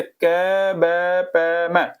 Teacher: अल्प प्राण जिन शब्दों को बोलने में कम वायु निकलती है, कम हवा निकलती है